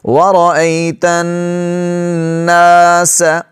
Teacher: ایک الف کی مقدار کھینچیں گے، الف کو، حرف مدہ ہے